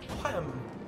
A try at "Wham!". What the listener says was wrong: You gotta really pronounce the H in it.